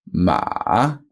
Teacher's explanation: ma with a little croak and then back up again ma almost goes back up as high as the first tone but not quite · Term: full third tone